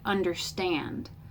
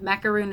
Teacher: it's unstressed unstressed stressed like understand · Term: anapest